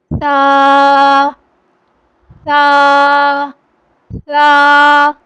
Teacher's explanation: دیکھیں کوئی سیٹی کی آواز نہیں آ رہی۔ سا بالکل نرمی سے معروف پڑھنا ہے۔ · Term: نرمی والے حرف